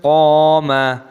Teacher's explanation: Wa annahu lamma, mim tasdid dibaca gunnah berdengung dan mimnya dibaca panjang, ada tanda alifnya matobi'i. Lamma qama, panjangkan qafnya, ada tanda alifnya matobi'i.